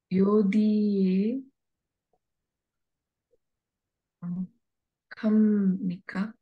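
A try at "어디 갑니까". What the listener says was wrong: This is ao not yao. Not yao. This is ao. Ao die. Ao. Like how say in English in ao, right? Ao. Ao die.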